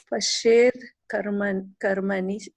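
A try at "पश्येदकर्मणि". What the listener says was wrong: Pashed, if you say, then you have to say akarmani, not pashed karmani. Pashed akarmani or pashed akarmani, not karmani.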